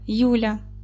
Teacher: Ль буде мати м'який приголосний звук, тому що я пом'якшує у нас, а я в свою чергу буде мати один голосний звук.